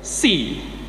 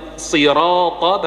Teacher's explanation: kalau kita nggak memaksimalkan huruf shadnya jamaah, pasti akan geser ke si